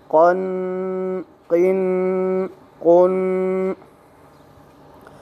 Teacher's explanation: قوف حروف مستعلیہ میں سے جو حرف گرین آئے اس کو موٹا پڑھے، منہ بھر کے آواز نکالے. قوف دو زبر قن، قوف دو زیر قن، قوف دو پیش قن، قن قن قن.